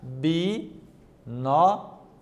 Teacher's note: Observe que o nó é a sílaba, então, acentuada, a antepenúltima sílaba.